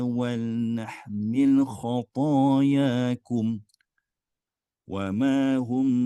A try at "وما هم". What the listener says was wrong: tu tekan wama hum tak payah tekan wal nahmil khatayakum wama hum bihamilina min khatayahum